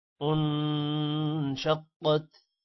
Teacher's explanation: نون پر غنہ ہے، قاف موٹا ہوگا